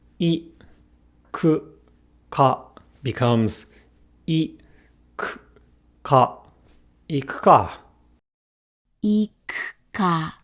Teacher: we do not engage our vocal cords for I and U when they are found between any pair of unvoiced consonants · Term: devoiced